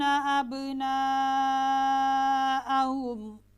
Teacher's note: الف مدہ کے بعد حمزہ اسی کلمہ میں ہو تو مد متصل کہلاتی ہے، اس کو لمبا کرنا واجب ہے، اس کی مقدار 2 الف، ہرائی الف، 4 الف تک ہو سکتی ہے۔